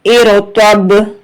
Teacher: یہاں پر با جو ہے حرف قلقلہ ہے تو اس پر جھٹکا دیں گے، آواز کو لوٹا کے پڑھیں گے